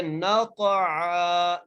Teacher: نون کو قاف سے ملاتے ہوئے پڑھ رہے ہیں اور قاف پر قلقلہ کر رہے ہیں